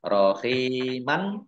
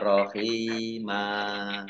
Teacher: Fathah tanwin alif dibaca fathah karena wakof ya, dan panjang 2 harokat, namanya mat aiwad